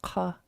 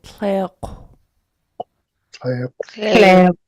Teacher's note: This sound is an underlined K, and also you're rounding your lips when you breathe out the K sound. So the underlined K is back here in the back of your throat.